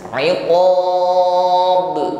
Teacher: Qalqalah yang di akhir kalimat maka qalqalah kubra. Bunyi pantulannya lebih tampak jelas.